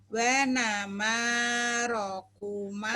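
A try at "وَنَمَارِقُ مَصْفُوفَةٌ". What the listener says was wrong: Bukan roku Ibu.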